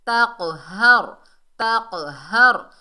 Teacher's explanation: ہا جو ہے یہ سینے سے ادا ہوگا، حلق کا وہ حصہ جو ہمارے سینے سے جڑا ہوا ہے تو یہ وہاں سے ادا ہوتا ہے، اس کو 2 چشمی ہا بھی کہتے ہیں، یہ چھوٹی ہا ہے۔